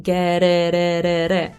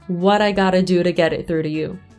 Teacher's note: Anche se ho cercato un po' di non usare quel suono troppo, è praticamente impossibile, perché quando ci sono le T magari dirò get, visto che nella prossima parola c'è la I, è molto naturale dire get it, e usiamo quel suono lì, get it. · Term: flap T